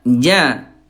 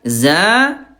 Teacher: huruf jim tengah lidah. Kalau zai ujung lidah.